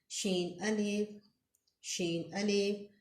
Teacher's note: वस्ती ज़ुबान ऊपर ताल्लुक के साथ